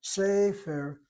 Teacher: I'm hitting the first syllable. I'm accenting the first syllable. Why? Because the medial tsere, as the medial cholam, draws the accent.